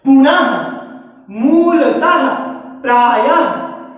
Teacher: इसका उच्चारण हल्के हा के समान होता है, अर्थात जब इसका आप उच्चारण करेंगे तो उस वर्ण का उच्चारण करने के बाद आपको हा, हल्के हा की ध्वनि प्रतीत होगी या सुनाई देगी। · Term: विसर्ग